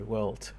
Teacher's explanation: in German or Dutch this is normal the final d which is voiced will become voiceless